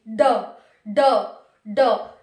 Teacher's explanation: जब हम ड और ढ को बोलते हैं, आप भी बोल करके देखना ड और ढ को, जब आप ड और ढ को बोलेंगे तो पहले आपकी जीभ उठेगी, फिर मूर्धा से लगेगी, मूर्धा से लगने के बाद झटके के साथ नीचे आएगी, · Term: द्विगुण व्यंजन